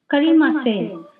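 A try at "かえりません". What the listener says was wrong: ಕರಿ ಅಲ್ಲ ಕಾಯ ಕಾಯಮಸೇನ್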